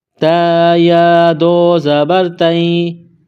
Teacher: نقطوں والی تا، چھوٹی تا، اس کو باریک پڑھیں گے۔ تا کے اوپر دو زبر تنوین ہے۔